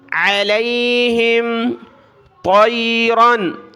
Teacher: عین کو گلے سے نکالیں